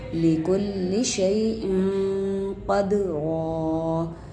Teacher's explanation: تنوین کے بعد قاف آ گیا حروف اخفائی میں سے. تنوین کا اخفا چھپا ہوا غنہ کریں گے